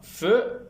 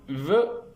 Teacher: La consonne feu est une consonne sourde, tandis que la consonne ve est une consonne sonore.